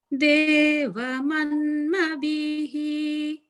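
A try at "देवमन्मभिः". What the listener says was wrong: I feel like you're putting a little bit of emphasis on the bhihi, whereas it's just hrasva. It's just a hrasva, mabhihi, mabhihi.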